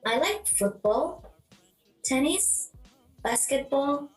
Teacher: is used to list the pattern is rising rising and falling intonation falls on the last item to show that the list is finished